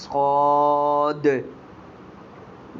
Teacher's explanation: جب آپ کو اس لفظ صاد کو ادا کریں گے تو آپ نے ادا کرتے وقت آخر میں قلقلہ کرنا ہے دال کا